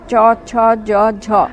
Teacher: যে ব্যঞ্জনধ্বনির উচ্চারণে শ্বাসবায়ুর বহির্গমন পথ প্রথমে রুদ্ধ হয়ে তারপরে সামান্য মুক্ত হয় এবং ঘর্ষণের মতো হয়ে শ্বাসবায়ু বহির্গত হয়, সেই রকম ঘর্ষিত ব্যঞ্জনধ্বনির নাম ঘৃষ্টধ্বনি বা ঘর্ষিত ধ্বনি।